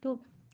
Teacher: تا زبان کی نوک سامنے کی 2 دانتوں کی جڑ میں لگانے سے ادا ہوتا ہے